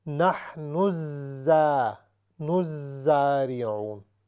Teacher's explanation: نون کے آگے زا پر شد ہے تو ہم نون کو زا میں ملا کر پڑھیں گے